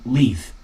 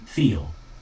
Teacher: You just slightly touch it with the tip of your tongue while letting air flow out the sides. There are two main L sounds in English, a clear L, like in leaf, and a dark L, like in feel.